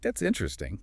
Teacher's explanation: use a rising, curious intonation. Your voice needs to go up a little.